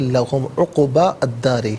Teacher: عقبہ میں با پر زبر سے الداری کے دال کے ساتھ ملائیں گے، درمیان میں الف یعنی حمزہ کو حذف کیا جائے گا، اور یہاں پر دال حرف شمسیہ تو لام کی آواز نہیں بلکہ دال کی آواز ہوگی، عقبل دار نہیں، عقبت دار۔